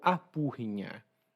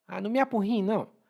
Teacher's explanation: E lá no Ceará, de onde eu venho, aporrinhar a gente pronuncia como apurrinhar.